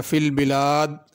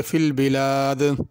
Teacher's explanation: دال کے اوپر قلقلہ ہوگا، یعنی تھوڑی سی اس کو جنبش اور حرکت دے کے پڑھنا۔ فی البلاد نہیں پڑھنا بلکہ فی البلاد۔